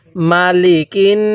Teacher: আমি কিন্তু মিমের মধ্যেও টান দেই নাই লামের মধ্যেও টান দেই নাই